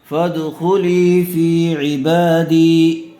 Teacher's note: دی زیر والے حرف کے بعد یا مدہ آئی ہوئی ہے، اس لیے دال کو کھینچ کر پڑھیں گے